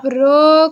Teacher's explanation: र बोलते वक्त जो जीभ है वो लुढ़कती है मुख के अंदर। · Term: लुंठित व्यंजन